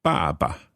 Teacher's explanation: Again, a neutral tone. Second one, neutral tone. First one is fourth tone.